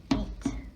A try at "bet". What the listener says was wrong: Beat? Is there two E's there? How do we say that E? Eh. Just like P-E-T is what word? P-E-T.